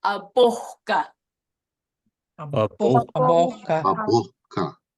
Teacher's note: This H is pronounced. It is not a glottal stop. It is pronounced.